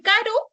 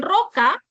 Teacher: Por ejemplo, en caro es una vibrante simple, pero en roca es una vibrante múltiple